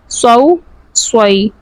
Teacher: صاد حروف مستعلیہ میں سے ہے، ہمیشہ پر پڑھا جائے گا